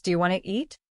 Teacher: Sometimes letters are dropped, like the T in want to. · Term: connected speech